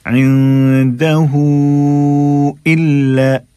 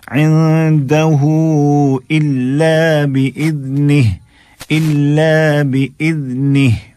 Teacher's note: ہو کو ہم نے کھینچا ہے اور مد کے بعد جو حمزہ ہے الا کا اس کو ہم واضح کر رہے ہیں